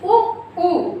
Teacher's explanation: आपने जब उ बोला तो आपके ओंठ किस तरह से? एकदम गोल साइड से हो रहे हैं। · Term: वृत्तमुखी